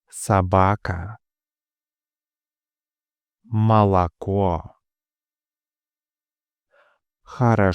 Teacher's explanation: Unstressed O is pronounced like a short a.